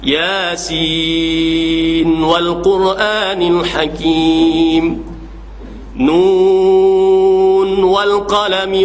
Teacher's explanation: Sebab haf di sini dia baca dengan izhar pada Nun pada ketika wasal dan waqaf